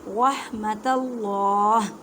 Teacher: اللہ کے لفظ سے پہلے زبر ہے، اس وجہ سے اللہ کے لفظ کو موٹا پڑھیں گے